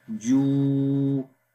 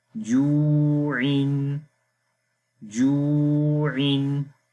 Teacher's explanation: This Waw is Waw Madda, which we read already. So we long here 2 seconds as well.